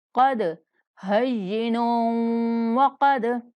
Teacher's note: قاف کو موٹا پڑھیں گے اور دال پر قلقلہ کریں گے